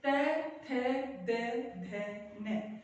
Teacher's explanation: जीभ हमारे ऊपरी दांतों के पीछे के हिस्से को स्पर्श करती है, तो ये है दंत्य वर्ण